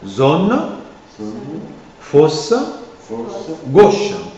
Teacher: Il y a une variante dans la prononciation un peu plus allongée, et c'est en position de syllabe tonique et suivi de n'importe quelle consonne. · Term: O fermé